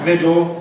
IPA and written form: ˈmɪdl̩ (middle)